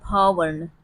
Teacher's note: भ क्या है, यह स्पर्श वर्ण है, यह घोष वर्ण है